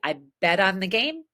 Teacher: The most common way to say the second phrase would be T between vowels is a D.